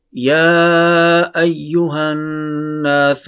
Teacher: نون مشدد ہے، یہاں پر نون غنہ لازمی ہے، یہاں پر نون غنہ کرنا ہے